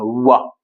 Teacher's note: व का व का उच्चारण दंत और ओष्ठ किया जाता है। व दांत भी स्पर्श करा और ओष्ठ को भी। इसलिए इसका उच्चारण दंत और ओष्ठ हो गया।